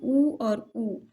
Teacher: ओष्ठ्य स्वर में ऊ और ऊ, जब हम ऊ का उच्चारण करते हैं तो देखते हैं कि हमारा ओठ जो है आगे की तरफ निकल जाता है